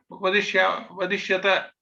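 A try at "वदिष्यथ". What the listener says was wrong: It is not Alpa Prana, not Tha. We have to be careful not pronounce.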